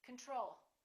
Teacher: second syllable is stressed the first o is reduced